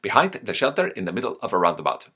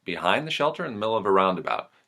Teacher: I'm hearing the Maltese accent as very articulate not necessarily staccato but articulate whereas the general American tends to be much more relaxed